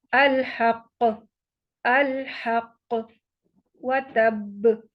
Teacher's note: وقف کی صورت میں ہوگا کیا کہ حرکت حذف ہو جائے گی، تشدید برقرار رہے گی، اور کیونکہ حروف قلقلہ ہے تو یہاں پہ قلقلہ اکبر ہوگا، با کو مضبوطی اور جماؤ سے پڑھیں گے